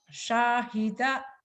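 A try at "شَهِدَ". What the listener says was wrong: Gak ada yang panjang Bu.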